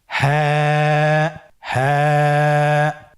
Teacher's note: হ্যাঁ হরফটি উচ্চারণের স্থান কণ্ঠনালীর শুরু হতে, অথবা আমরা যদি আরবিতে বলি হলকের শুরু হতে এই হরফটি উচ্চারিত হয়। কণ্ঠনালীর শুরু থেকে উচ্চারণ করুন হ্যাঁ।